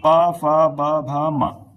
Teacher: ओष्ठ से यानी कि अपने जो होठ होते हैं उनसे प वर्ग जो है पूरा उच्चारित होता है